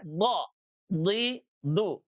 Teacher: huruf dod sekali lagi itu diucapkan dari pinggir lidah ya, bukan dari ujung lidah ya.